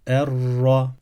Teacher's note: Üstün yani fetha ve ötre hareketi aldığında kalın okunan bir harf olduğu için a sesi ile okuduk